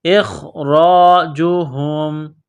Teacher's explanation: حمزہ کو خا کے ساتھ ملانا ہے، خا کو موٹا کرنا ہے ، را کے اوپر زبر ہے، را کو موٹا کرنا ہے،